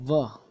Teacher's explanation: ठीक है, नेक्स्ट बात करें तो नंबर 7 है हमारा वकार च दंतोष्ठ, यानी व, ये दंत और ओष्ठ, इनको बोलते वक्त दोनों का उपयोग होता है, दांतों और होठों का, यानी ऊपर वाले दांत और नीचे वाले होठ